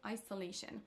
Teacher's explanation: L'erreur de prononciation suivante, c'est de mélanger le son S avec le son Z. Dans le mot isolation, on a donc un son S, mais M. Macron va le prononcer avec un son Z